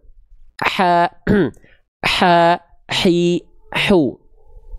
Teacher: Berarti kalau yang asalnya H besar di sini, H kecil itu naik sedikit ke sini. Karakter nafas yang keluar itu karakter yang berbisik, lembut. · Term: hak kecil